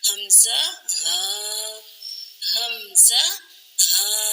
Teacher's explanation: اقصائے حلق یعنی گلے کے آخری حصے سے یہ 2 حروف ادا ہوتے ہیں